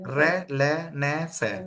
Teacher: ये वो व्यंजन होते हैं जिनका उच्चारण करते हुए ना जीभ का अगला भाग ऊपर के दांतों के मसूड़ों के पीछे लगता है। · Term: वत्सर्य व्यंजन